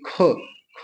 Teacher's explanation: यह आपका अघोष भी है और महाप्राण